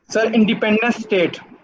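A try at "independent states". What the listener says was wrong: स्टेट्स। आखिर वाले एस पे कंसंट्रेट कर दें सारा, इंडिपेंडेंट स्टेट्स। स्टेट नहीं है,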